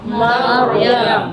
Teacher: Dia menebalkan, nah pindah dinaikkan suara ke atas. Padahal untuk menebalkan huruf kan suara naik. Naik pangkal lidah, naik suara.